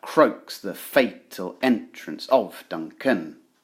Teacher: if you try reading it out loud you should be able to hear every other syllable being brought more closely to our attention · the most important words in this line croaks fatal entrance and Duncan are emphasized